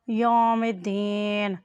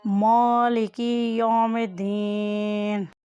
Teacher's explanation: یا کے اوپر زبر اور ساتھ واو ہے، یہ حرف لین ہے، اس کی آواز کو کھول کر ادا کریں